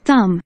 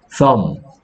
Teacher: MB에서 B는 소리가 나지 않습니다. 소리 내기 힘들기 때문이에요